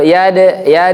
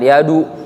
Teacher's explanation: Dadidu bade bukan bad atau bad, tapi yade mantul dia. Mantulnya ke fathah yade, kayak mau da gitu, bukan yadu. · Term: qalqalah